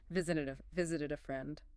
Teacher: the rhythm should flow smoothly right into the word a. Visited a visited a friend.